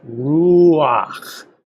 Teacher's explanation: You say both vowels together, and they just count as one vowel. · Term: diphthong